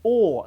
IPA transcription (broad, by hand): ɔː